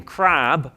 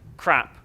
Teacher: When I talk about length issues, I'm talking about my ex-student who didn't differentiate between crab with a long A and crap with a short one